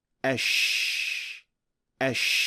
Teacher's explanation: suara yang dihasilkan tidak begitu tajam, tetapi menyebar keluar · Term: attafasiyi